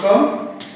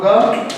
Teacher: उच्चारण केवल मुख से हो रहा है नाक से नहीं हो रहा है